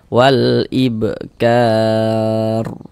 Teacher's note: Wal ibkar, kar dibaca panjang. Ini namanya mad arid li sukun, namun pada awalnya namanya mad tabi'i.